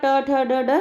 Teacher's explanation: ट ठ ड ड, यानी ट्वर्ग जो होता है वो मूर्धन्य ध्वनि